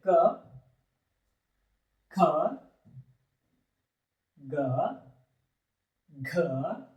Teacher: ಈ ಅಕ್ಷರ ಕ ವರ್ಗದ ಅಕ್ಷರಗಳು ಎಲ್ಲಿ ಹುಟ್ಟುತ್ತಾವ ಅಂದ್ರ ಕಂಠ ಭಾಗದಲ್ಲಿ ಹುಟ್ಟುತ್ತಾವ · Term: ಕಂಠಾಕ್ಷರಗಳು